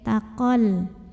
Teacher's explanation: Nah, tapi di sini dibaca panjang 2 harokatnya itu hanya ketika berhenti di sini saja. Sedangkan jika mewasolkan atau melanjutkan bacaan, mad tabi'i ini gugur. Qafnya jadi pendek, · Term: takhallus bil hadfi